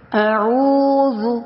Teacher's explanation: اعوذ یعنی حمزہ اقصی حلق سے دور ہے، عین وسط حلق سے، اور واو پہ مدہ یعنی واو مدہ بن رہا ہے، تو ہم اس کو کھینچ کر پڑھیں گے